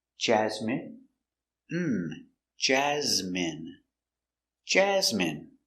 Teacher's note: Stress the first syllable